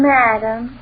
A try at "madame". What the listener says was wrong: Can't you say madame with the accident on madame, not madam like you say it?